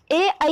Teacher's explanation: ए और आई का उच्चारण स्थान कंठ तालु है